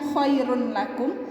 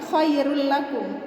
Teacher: Tanwin, ini tanwin ya, tanwin yang ini adalah domatain namanya, harokat ini namanya domatain. Tanwin bertemu dengan huruf lam di depannya, lam itu adalah huruf idgham bila gunnah, maka dia tidak dengung, akan tetapi tetap dimasukkan ke huruf sesudahnya. Jadi bacanya bukan khairun lakum ya, ingat bacanya bukan khairun lakum tapi khairul lakum, tapi tidak didengung.